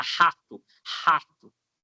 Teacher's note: para falar rato, o som para ali na garganta